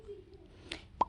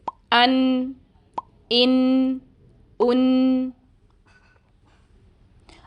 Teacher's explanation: اس سے پہلے آپ نے لام کے لیے 8 دانتوں کے مسوڑے استعمال کیے تھے، مگر اب صرف 2 دانتوں کے مسوڑوں پر زبان کی نوک رکھی جائے گی، یعنی آپ نے زبان کو اندر زیادہ پھیلانا نہیں ہے، اور نون کی آدھی آواز ہمیں اس جز لسانی سے سنائی دے جائے گی اور باقی آدھی آواز ہمیں دوسرے جز خیشومی سے سنائی دیتی ہے، جیسے ان، ان، ان۔ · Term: غنہ